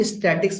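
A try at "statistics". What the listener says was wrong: एक correction. स्टैटिक नहीं बोलते हैं, स्टैटिस्टिक्स पे स्टैटिस्टिक्स बोलते हैं, स्टैटिस्टिक्स।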